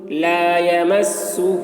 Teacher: ہاں میں الٹا پیش اور مد دونوں ہے، اس لیے کھینچیں گے اس کو زیادہ